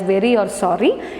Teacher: it makes only one tap towards the tongue, not intermittent taps. Only one tap, ഒരൊറ്റ തവണ മാത്രമേ അതവിടെ touch ചെയ്യുന്നുള്ളൂ അല്ലെങ്കിൽ കോണ്ടാക്റ്റിൽ വരുന്നുള്ളൂ. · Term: tap or a flap